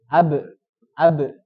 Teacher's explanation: Tempat keluar huruf ba di kedua bibir. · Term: asyafatan